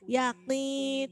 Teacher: Qaf itu huruf tebal karena dia kasroh, jadi ketebalannya berkurang. Yakni, tapi harus tetap nampak.